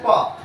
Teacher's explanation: लेकिन जब हम प बोले तो हमारा दोनों ओठवा सट गया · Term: स्पर्श व्यंजन